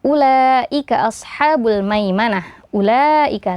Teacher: ada huruf mad yang bertemu dengan Hamzah dalam satu kata maka hukumnya adalah mad wajib muttasil ya jadi minimal dibaca empat harakat boleh lima atau enam